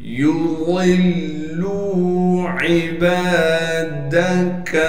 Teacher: کاف کو باریک کر کے بغیر کھینچے پڑھیں گے